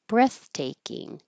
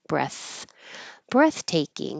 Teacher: you won't hear the th F very much but you'll hear a tiny little pause because of that airflow breathtaking it kind of sounds like a pause but I am